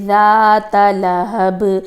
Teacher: अब ज़ाता पे कोई भी आप देख रहे हैं कोई भी लंबा करने की चीज़ नहीं है, लेकिन ये कि ज़ाल के बाद जो अलिफ आ रही है उसकी वजह से हम ज़ा को थोड़ा सा लंबा करेंगे